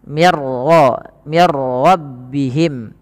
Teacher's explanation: Maaf, ini tidak ada bacaan qalqalah pada raful ra, tapi dibaca dengan bacaan idgham bila gunnah, yang dimana suara nunnya langsung dimasukkan kepada huruf ra dan ra dibaca dengan tebal.